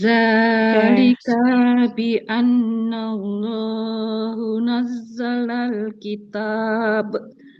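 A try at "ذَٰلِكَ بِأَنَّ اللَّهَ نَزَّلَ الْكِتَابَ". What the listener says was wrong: Dzalika bi annallaha bukan nazzalallah. Dzalika bi annallaha bukan bi annallahu. Dzalika bi annallaha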